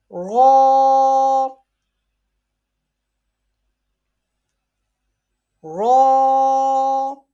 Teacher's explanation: raw is pronounced is in thicker voice because it has zabar on it